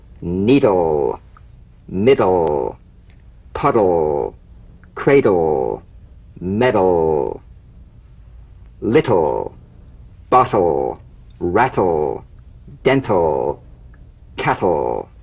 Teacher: tip of the tongue as the d or t click slides quickly into the l